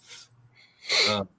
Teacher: Your teeth and your lips go together. And it is a fricative. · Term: F sound